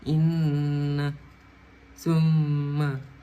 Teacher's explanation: dengungan yang keluar dari rongga hidung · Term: gunah